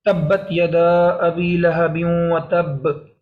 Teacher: با کے آنے کی وجہ سے میں نے اس پہ قلقلہ کیا اور با کو نمایاں کیا